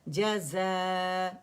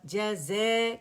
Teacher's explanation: جزا، جزے کر کے نہیں پڑھیں گے، امالہ نہیں کریں گے